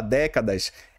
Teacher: a palavra décadas é acentuado por ser uma proparoxítona. Eu tenho a antepenúltima sílaba forte.